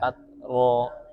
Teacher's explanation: yang penting ta sukun pasti ada hamesnya ya